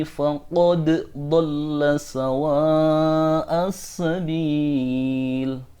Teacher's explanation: Faqad—dal itu memiliki qalqalah; Hal itu tidak boleh dihilangkan dan harus dibaca dengan izhar.